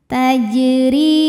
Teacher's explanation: huruf ro dibunyikan secara tarqik sebab berbaris kasrah maka dibacanya tipis tajri RI Mad Thobi'i dahohiri karena ada Ya Sukun didahului baris